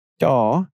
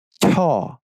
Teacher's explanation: you put your tongue in the same place you do everything one single difference is you force a puff of air out of your mouth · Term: post aspirated